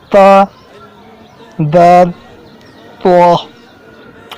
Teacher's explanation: ज़ुबान की नोक और ऊपर के दांतों की जड़ से अदा होते हैं